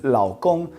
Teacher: that will be a third tone and then followed by a first tone